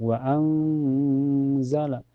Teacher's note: Lebih lengkapnya ifa ausat karena ada nun sukun ketemu zai. Cara bacanya nun sukunnya disamarkan ke zai dan ditahan sampai terasa ke hidung.